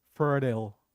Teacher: In American English, it'd be the R is rolled. I repeat, the R is rolled and the T is D.